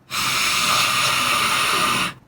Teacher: this is exactly the same as the english h but it's aspirated which means that the air must come out of the lines